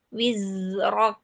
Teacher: Terus kalau misalnya zai itu jangan wizrok satu-satu. Wiz dulu zainya disukunkan baru pindah ke ro. Wizrok gitu, tidak wizrok gitu ya.